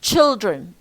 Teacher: Here we have two syllables, and child is stressed.